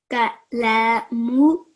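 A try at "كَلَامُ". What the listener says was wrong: Kalamu. Kalamu. Just try to make the lam a little bit longer.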